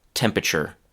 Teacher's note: Um, and what we in fact say is not temperature, but temperature. You don't even hear that second letter, the first letter R in the middle of the word temperature.